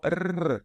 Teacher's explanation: grandona mas basicamente T significa língua e PS significa ponta então é o r feito na ponta da língua · pronunciando com a língua vibrando ali no céu da boca então R então